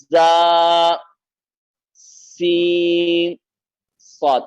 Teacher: اس کے اندر سیٹی پائی جائے گی، صفت صفیر اس کے اندر ہے